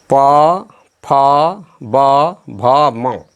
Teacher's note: पवर्ग, प फ ब भ म तथा उपदमनीय नाम का उच्चारण ओष्ठ से होता है, इसलिए इसे ओष्ठ भी कहते हैं।